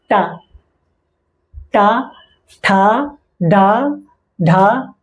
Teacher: जबान का अगला हिस्सा है वो तालु के जो अगले हिस्से हैं उससे टच होता है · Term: मूर्धन्य